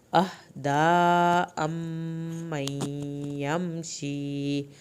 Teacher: میم کی شد پہ ایک الف کے برابر دیر لگانی ہے. امن، یا کی شد پہ بھی دیر لگے گی.